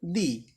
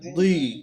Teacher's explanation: দালজের পড়ছিলাম দি, একদম স্বাভাবিক এবং পাতলা করে, দালজের দি। আর দজের দুই, একটু মোটা করে, দুই। হ্যাঁ, মুখের ভিতরটা ফাঁকা করে, দুই।